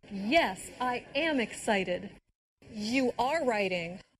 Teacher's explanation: Did you hear the stress on the verb be when said am and are?